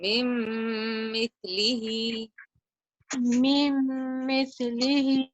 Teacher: So you need to hold the sound for 2 counts and nasalize the noon.